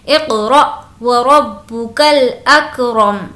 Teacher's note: را کو موٹا پڑھیں گے کیونکہ زبر ہے